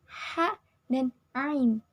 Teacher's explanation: bunyi yang dihasilkan dengan cara mendekatkan akar lidah kepada dinding rongga kerongkongan. tetapi tidak sampai menyentuhnya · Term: bunyi root pharyngeals